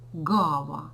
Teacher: Ґ у нас парний глухому к він є дзвінкий